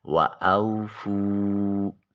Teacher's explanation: واو ساکن اور اس سے پہلے والے حرف فا کے اوپر پیش ہے، واو مدہ ہے، ایک الف کے قائم مقام اس کو لمبا کریں گے